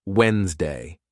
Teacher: in Wednesday, the D is silent, so you say it as Wednesday.